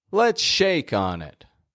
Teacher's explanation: If you hear the peak up in the word shake, then you are correct.